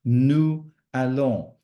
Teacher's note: the French would always say nous allons with a sort of a Z sound just to link the two together · I did the elision between the S of the nous and the A, which is a vowel of allons.